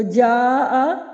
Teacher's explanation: سبب مد آ گیا ہے اس لیے یہاں پہ ہم حروف مدہ پہ آواز کو دراز کر رہے ہیں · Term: مد فرعی